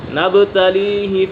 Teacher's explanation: با کے اوپر قلقلہ ہو رہا ہے